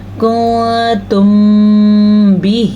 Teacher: میم ساکن کے بعد با آ گیا ہے تو یہاں پہ ہمارے ہونٹ بند ہو جائیں گے، اس کو اخفاء شفوی کہتے ہیں۔